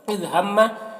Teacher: मीम मुशद्दद है, मीम मुशद्दद है तो गुन्ना होगा।